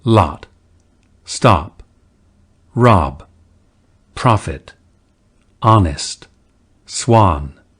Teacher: the lot and though lexical sets were pronounced without the lip rounding of today's RP, we are directed to the less rounded versions spoken in mainstream American English.